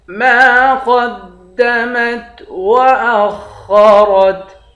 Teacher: خا اور را دونوں کو موٹا پڑھیں گے